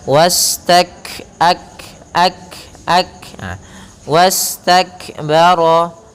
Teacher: satu si yau si dan tertahan suara Hamas mengalirnya nafas maka langkah pertama adalah syiddahnya dulu memberikan sifat syiddah pada huruf Kaf ketika sukun baru dilanjutkan ke huruf hamsnya